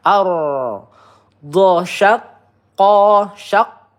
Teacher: Nah ada tasdidnya qof-nya ditekan terlebih dahulu.